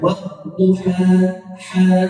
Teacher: ujungnya ini kita baca halus jangan sampai kita baca seakan-akan di ujungnya itu ada huruf hamzah Jangan dibaca wadduha Ha ah ini salah kita harus baca waduha